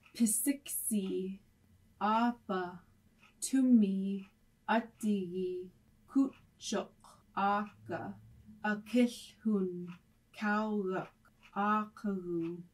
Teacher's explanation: The Iñupiaq voiceless stops pa, ta, ka, and ka are not aspirated as they often are in English.